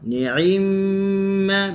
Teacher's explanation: Ni'imma, mim bertasydid gunnah dengun.